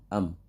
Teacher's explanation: Dan untuk mim ini tidak dipantulkan karena bukan huruf kolkolah. Ketika sukun itu bacaannya izhar, am.